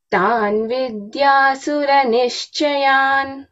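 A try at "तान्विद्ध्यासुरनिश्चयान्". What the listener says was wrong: Vidhyasura. Dhya mahaprana.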